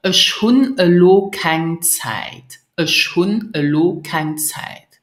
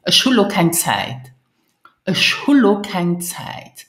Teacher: I have dropped the two N of hun because in my sentence it is followed by lo.